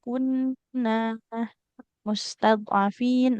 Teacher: nun fathah ketemu alif, Ibu ya. Maka harus panjang dua dua harakat